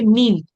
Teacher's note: যেমন একটা হতে পারে মিম। মিম যখন আপনি উচ্চারণ করতে হবে আপনার উপরের আর নিচের ঠোট একসাথে মিলিয়ে উচ্চারণটাকে আনতে হয়।